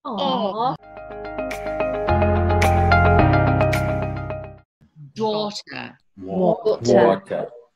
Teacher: The British version of this sound is just more forward in the mouth than the American version. So you purse your lips as if you were saying, oh, in sympathy to someone.